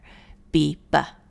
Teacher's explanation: you cannot physically say it without at least a little bit of the vowel sound typically a short U at the end of the letter you may say the uh part very short in duration but